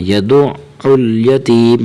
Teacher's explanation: یہاں عین کی آواز ہے، حمزہ نہیں پڑھنا ، یدع ال، حمزہ کے ساتھ نہیں بلکہ عین کے ساتھ